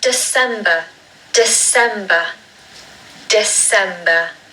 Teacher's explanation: There's a schwa at the beginning of the word again, like November.